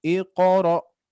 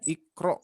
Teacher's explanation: Qafnya diringankan dan juga dipantulkan. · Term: qalqalahnya